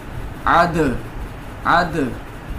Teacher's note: دال پہ قلقلہ ہو رہا ہے، دال چونکہ ساکن ہے اور حروف قلقلہ میں سے ہے